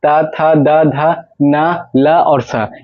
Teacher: ये सब अगर बोलेंगे तो सब जीभ है जो जाके दांत में सटेगा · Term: दंत वर्ण